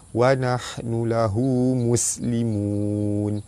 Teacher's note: ha dhamir sebelum dia huruf yang berharakat, mad silah qasirah, dibaca panjang 2 harakat